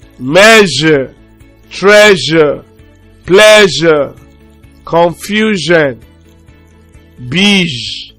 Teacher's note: the voiced post-alveolar fricative consonant sound. Z, z. Measure, treasure, pleasure, confusion, beige, jeune, jeune.